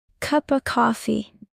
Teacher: Pay attention to weak sounds in cup of coffee. The of sounds like uh